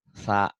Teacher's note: Sanya ujung, bukan sya, tapi lidahnya ke ujung gigi, cadel